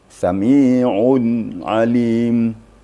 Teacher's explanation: Baris depan atau dhammatain bertemu ain. Jadi betul-betul dijelaskan nun matinya. Jangan ada embel-embel nun kembali. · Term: izhar hakiki